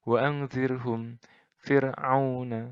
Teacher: ro' sukun ini diawali dengan huruf kasroh, dengan baris kasroh. Bacanya juga tipis. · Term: ro' tarkik